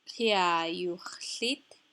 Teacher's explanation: Kia is open, stressed, not at the end of a word, so it is also lengthened.